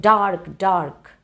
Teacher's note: then you want to give stress on both words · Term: spondy